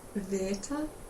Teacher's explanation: it's the same same vowels we have in words like bit but longer